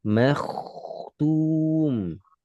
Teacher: Tebalkan kho karena diawali dhammah, fathah. Fathah atau dhammah kho sukun jadi tebal. Makhtum. مختوم.